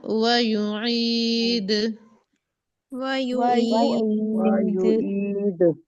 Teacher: वो को लंबा नहीं करना, वाव तो नहीं है ना।